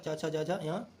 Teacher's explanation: च वर्ग तालु से बोला जाता है।